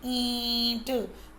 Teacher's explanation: मुंह से और नाक दोनों से वो आवाज़ आ रही है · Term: चंद्र बिंदु